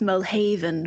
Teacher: with the emphasis on the second syllable